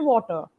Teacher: if you have to follow especially the British pronunciation system the r is a little less emphasized